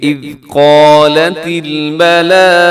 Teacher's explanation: یہاں قال میں قاف موٹا ہے، ساتھ الف جو ہے وہ بھی موٹا پڑا جائے گا کیونکہ الف کے بارے میں آپ جانتے ہیں کہ الف سے پہلے موٹا حرف آ جائے تو الف موٹا ہو جاتا ہے، اور الف سے پہلے اگر باریک ہو جائے تو الف بھی باریک ہو جاتا ہے ایک لمحے میں ہی.